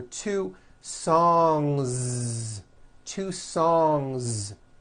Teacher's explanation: don't forget to add a voiced Z ending